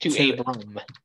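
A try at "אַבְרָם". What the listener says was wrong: Abram, yeah. Good.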